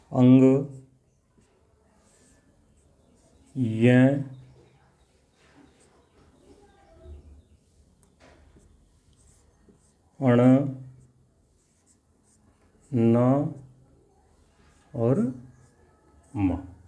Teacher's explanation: इनके उच्चारण में हवा का मुख्य अंश नाक से बहार निकलता है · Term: नासिक व्यंजन